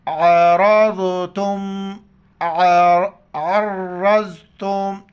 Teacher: فیما, فیما, عین کو را کے ساتھ ملائیں گے, را کے اوپر زبر ہے, را کو موٹا کر کے ضاد کے ساتھ ملائیں گے. ضاد کا ادا کرنے کا طریقہ یہ ہے کہ زبان اوپر کے رائٹ سائڈ پر داڑھ کے ساتھ ٹچ ہو جائے, ضاد ادا ہو جاتا ہے.